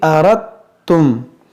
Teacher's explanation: इस दाल को ता में दाखिल कर देंगे, यानी यहाँ पर इसकी आवाज़ ही नहीं आएगी।